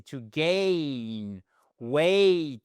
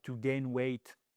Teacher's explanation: vous avez cette diphtongue qui n'est pas comme dans gain, dans grain. Vous voyez, c'est très plat en français.